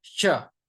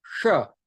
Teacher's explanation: The first sha is to be pronounced by touching the lower palate, sha, and the second is sha, that has to be pronounced by touching the upper palate. So it is not shiksha, it is shiksha, shiksha.